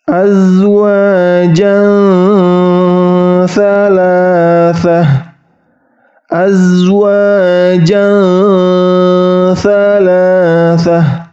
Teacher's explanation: Jadi cara membacanya azwajan thalathah, azwajan thalathah. Ingat, bunyi nunnya hilang, masuk ke tha, tetapi tha-nya disamarkan dan didengungkan 2-3 harokat